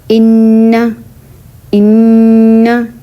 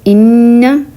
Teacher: ان کہتے ہوئے میں نے جو زبان ہے تالو کے ساتھ جا کے لگی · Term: نون غنّہ